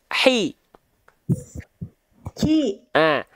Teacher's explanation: Hak kecil dilafalkan dari tengah tenggorokan